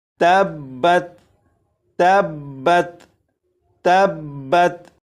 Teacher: اور آپ کو معلوم ہے با حروف کلکلہ میں سے ہے، اور حروف کلکلہ جب مشدد ہوں تو انہیں جماؤ کے ساتھ ادا کرتے ہیں۔ تو یہاں پر با مشدد ہے تو اسے جماؤ کے ساتھ ادا کریں گے